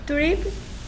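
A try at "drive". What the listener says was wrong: 그러면 발음이 드립은 아닐 것 같아. 자, 여기 끝에 드라이브. 있는 이가 소리가 안 나는 대신에 건너 건너 집 가서 이름 물어보죠. 드라이브죠, 드라이브.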